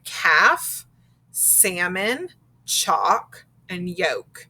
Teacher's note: and when that happens the l is silent so we have words like calf salmon chalk and yolk